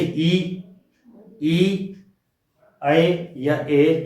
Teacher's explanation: जब भी इन्हें बोलते हैं तो जीभ का अगला हिस्सा यूज होता है इनमें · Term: अग्र स्वर